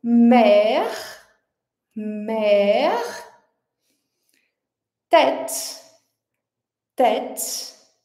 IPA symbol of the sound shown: ɛ